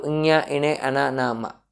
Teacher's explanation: ఈ వర్గ పంచాక్షరాలన్నీ నాసిక సహాయంతో పలుకుతాము, నాసికాన్ని అనుసరించి పలుకుతాం కాబట్టి వాటిని అనునాసికాలు అన్నారు.